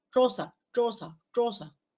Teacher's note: Qué significa retroflexo que la parte delantera de la lengua se va a doblar se dobla hacia no hacia la zona del Pos dorso de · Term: sonido retroflexo